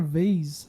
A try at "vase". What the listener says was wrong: Vase without the R.